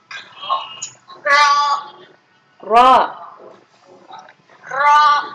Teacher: tidak ro biasa ya, tapi seperti tebal di dalam rongga mulut kita ini seperti penuh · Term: ro yang tebal